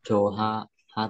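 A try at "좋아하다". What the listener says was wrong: Chồ a ha tả, mình sẽ đọc là chồ a ha tả như này. Âm hở là âm câm, nhớ tại chồ a ha tả.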